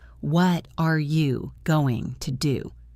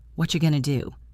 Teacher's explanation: In normal speech, we don't say, What are you going to do? We say, What you going to do? It almost sounds like one breath.